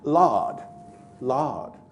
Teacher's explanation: he puts the vowel right down at the bottom back of the cardinal vowel diagram